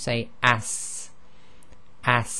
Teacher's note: there's a continuation of breath and this has what we call a whistling sound · So there's a sort of whistling sound at the end